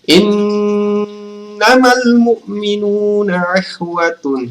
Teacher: Ya, cara membacanya adalah pada saat teman-teman membaca innama, ini in ditahan sepanjang dua harokat atau 1,5 alif atau 2 harokat sampai 3 harokat, atau sama saja kalau kita sebut 2 atau 3 ketukan, teman-teman. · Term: gunna